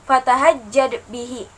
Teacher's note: di sana ada dal mati yang dihukumi dengan qalqalah sughra. Fatahajjad bihi, ada pantulan gitu loh di dalamnya.